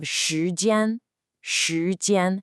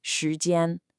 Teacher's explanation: That's a rising 2nd tone and then a flat, high 1st tone.